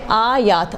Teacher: تو ابھی الف ہے، الف کو مد دیں گے تاکہ محسوس ہو کہ یہاں پر الف ہے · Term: حروف مد